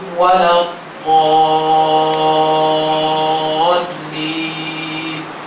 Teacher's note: Dia baca mad alif disukun 2 harakat sahaja.